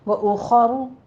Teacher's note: खा भी पुर है, रौ भी मुफख्खम पढ़ी जाएगी